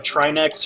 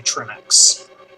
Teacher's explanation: because of how English works you stress the second syllable